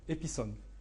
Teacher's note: Ils entendent un I entre le P et le S. Si vous demandez à des Japonais, ils vont entendre un OU entre le P et le S.